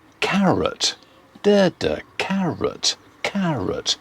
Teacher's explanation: We don't say carrot, we say carrot. Stress on the first syllable, the second one is weak, unstressed. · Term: unstressed vowel sound